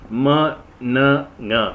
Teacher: the soft palate is lowered during the sound during the time a nasal sounds are produced